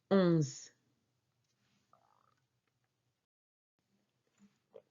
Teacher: O-N c'est une syllabe nasale, pronounced from the nose.